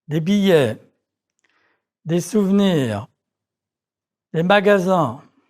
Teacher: the final S of a plural noun is not pronounced